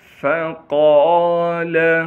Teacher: قاف کو موٹا کر کے پڑھنا ہے اور قاف کے بعد الف مدہ ہونے کی وجہ سے قاف کو ایک الف کے مقدار کھینچیں گے۔